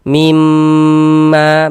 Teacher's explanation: Maka kita gunnahkan mim. Jadi di bagian mimnya itu suaranya itu kita tahan, kita panjangkan sejenak sepanjang 2 harokat. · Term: gunnah musyaddadah